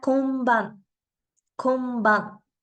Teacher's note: Al igual que en el español, la N se pronuncia como letra M antes de sonidos como la P o la B.